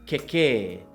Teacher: And the last example is kekē with a short 'e' sound followed by a long 'e' sound